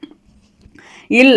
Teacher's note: மேல்வாய்ப்பல்லின் அடியை நாக்கின் ஓரங்கள் தடித்து நெருங்குவதால் வந்து இல் பிறக்கின்றன. இல் அப்படின்னா வந்து மேல்வாயை நாக்கின் ஓரங்கள் தடித்து தடவுதலால் பிறப்பது தான் வந்து இல்.